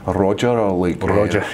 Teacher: the way we roll our R's is very like French